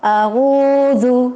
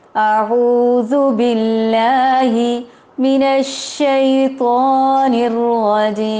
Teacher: حمزہ ہے اور اس کا مخرج الگ ہے۔ عین ہے اور اس کا مخرج الگ ہے۔ وسط الحلق ہے اور اقصى الحلق ہے۔